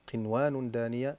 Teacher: أما الكلمة الأخيرة فهي قنوان وقد وردت في سورة الأنعام قنوان دانية نون ساكنة بعدها واو الحكم إظهار لأن الإدغام لا يكون في كلمة واحدة